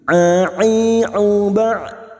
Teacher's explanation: Huruf ain yang memiliki sifat tawassut dan jahar jangan samakan dengan hamzah